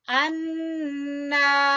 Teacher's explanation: نون مشدد کا گنہ پھر الف مدہ